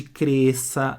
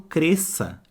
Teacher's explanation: parece que aquele S ali nem existe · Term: dígrafo